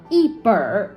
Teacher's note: 那这里面的我们的儿化音放在结尾呢，其实有点像我们英文中的卷舌音 所以我们直接连在本子的本后面就可以了。一本儿，forexample，一本书。那本呢，我们通常用来形容书籍或者薄册等一类的物品。那我们类似书籍类的，我们可以把这个什么书、什么类型的书加在书前面，一本的后面，比如说一本漫画书，或者是一本词典。那其他